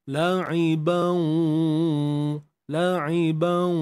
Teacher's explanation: Idgham bi ghunnah. Masuk serta dengung.